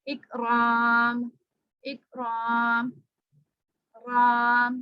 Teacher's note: कलकला नहीं होगा, आवाज बाहर दूसरी तरफ लौट के नहीं आएगी